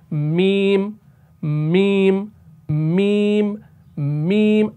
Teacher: अच्छा, अब ये जो मीम है ना, मीम आपका तर वाले हिस्से से अदा नहीं होगा। मीम जो है ये आपका खुश्क वाले हिस्से से अदा होगा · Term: हर्फ मीम, हरफ मीम